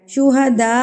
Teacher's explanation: مد متصل، یعنی کہ بڑی مد کو ہم 4 حرکات کے برابر کھینچتے ہیں، اور اس کی پہچان ہم اس حمزہ سے کریں گے کہ اس مد کے بعد یہ والا حمزہ آئے گا تو ہمیں اس کی پہچان ہو جائے گی کہ یہ کون سی مد ہے، مد متصل، یعنی کہ بڑی مد، اور ہم نے اس کو 4 حرکات کے برابر کھینچ کے پڑھنا ہے.